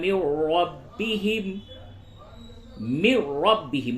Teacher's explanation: نون ساکن کے بعد را ہے ادغام بلا غنہ ہوگا